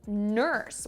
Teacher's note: we have an r colored vowel such as in the word nurse